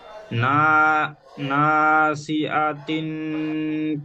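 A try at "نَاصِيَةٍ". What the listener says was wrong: আতিন নয়, এ হামজা যাবার আ হয়, এখানে ইয়া রয়েছে তো ইয়া যাবার ইয়া হবে নাসিয়াতিন। এখানে ইয়াটি আপনার আ হয়ে যাচ্ছে, হামজার উচ্চারণ হয়ে যাচ্ছে নাসিয়াতিন। আ নয় ইয়া, বানান করেন, নুন আলিফ যাবার না।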